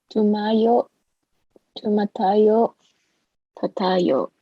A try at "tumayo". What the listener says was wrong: Again, the last syllable, right, is the accent. So, tumayo.